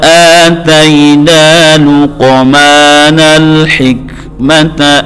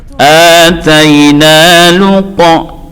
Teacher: qafnya juga qalqalah, dan jangan ragu untuk memantulkan. Luqmanal hikmata an ishkur lillah.